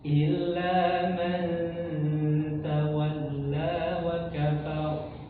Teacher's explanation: huruf ro didahului fathah maka tebal